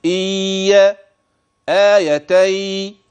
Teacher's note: كلاهما بغنه فتنبه نون ساكنه وياتي بعد ذلك تنوين